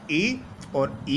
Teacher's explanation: तालू से उच्चारित होने वाले स्वर ई और ई है